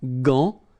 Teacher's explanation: you've got this an, so it's nasal, gant, and then final T is not pronounced here.